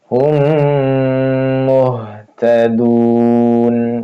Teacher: ditahan dengung ditahan dua harakat · memasukkan mim mati ke mim berikutnya ya, ke dalam mim berikutnya. Wahum 2 harokat, wahum ditahan, ditahan 2 harokat. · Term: idgham mim, idgham mimmi